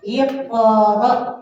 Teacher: Ini ada hamzah, jadi disentak ya.